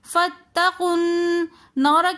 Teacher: فاتقوا النار کے اندر نون مشدد آ رہا ہے تو اس لیے ہم یہاں پر غنہ کریں گے